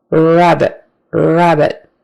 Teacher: Not wabbit with the lips together, but tongue back, mouth normal. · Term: initial R